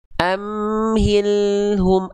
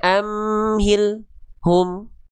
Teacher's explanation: Al-nya terus ngalir sedikit. Enggak boleh amhil hum.